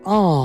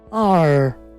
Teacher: ব্রিটিশরা এটার উচ্চারণ করে আ, আমেরিকানরা উচ্চারণ করে আর। এখানে একটা লং সাউন্ড রয়েছে আ, আমরা BBC সাউন্ড শিখছি যেহেতু।